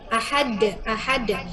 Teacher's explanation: pemantulan qalqalahnya betul-betul pakai dal gitu.